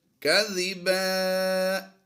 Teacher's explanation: دو زبر کی تنوین کو ہم نے الف مدہ سے بدل دیا ہے